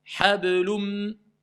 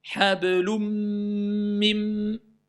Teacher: je ne prononce plus le N, mais je passe à l'autre lettre. Mais comme je passe à l'autre lettre, je la renforce. Il y a une shidda dessus. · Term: l'idgham